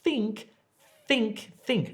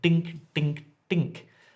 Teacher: And the reason is, to say think properly, your tongue, your top teeth actually rest on your tongue. I think, think, think, not dink, dink, dink.